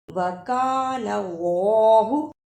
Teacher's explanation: جس اللہ سے پہلے زبر ہو اس کو موٹا یعنی پر پڑھتے ہیں